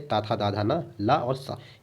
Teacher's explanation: दंत से ता, था, दा, धा, ना, ला और सा, इसका उच्चारण दंत से होता है।